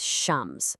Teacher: So whenever you put the in front of a word that starts with one of these guys, you totally skip the L sound. Instead, you just hit that first letter a little harder, like you're saying it twice. And this is exactly what's happening with shams, the sun, because sh is a sun letter, see?